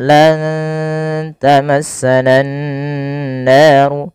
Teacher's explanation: Kemudian ketika melafalkan lan tamassanan nar, pada lafal nunnya lan tamassana nar, nunnya disamarkan kepada huruf ta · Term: ikhfa